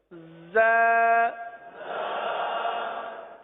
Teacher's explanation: اس حرف کو ایک الف تک کھینچ کر پڑھیں گے